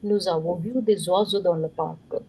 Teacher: This s give you z sound because there are two vowels.